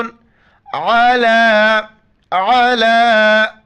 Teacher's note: عین کو گلے سے ادا کرنا ہے، یہاں پر بھی عین کو گلے سے ادا کریں گے، راک موٹا کر کے واو کے ساتھ ملائیں گے۔